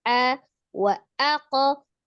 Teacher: Kemudian hamzahnya dijelaskan ya, a wa aqo, kemudian langsung disukunkan ke qaf dengan tidak memanjangkan hamzahnya, wa aqo enggak, tapi wa aqo langsung disukunkan ya.